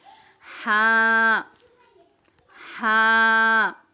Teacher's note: इसको अक्सर कहा जाता है ठंडी हा मतलब इसको आपने बिल्कुल नरमी से पढ़ना है।